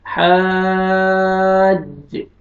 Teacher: ये अलिफ मद है, अलिफ से पहले फतहा आपने खींचना है, लेकिन ये मद है तो आपने और ज्यादा खींचना है